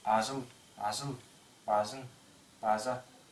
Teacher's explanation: как и остальные звонкие согласные Тувинская буква ж слегка глухая если рассмотреть длительность этой буквы то примерно будет Вот такая 1/3